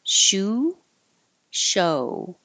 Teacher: remember the American o being two parts o and shu is just a pure u sound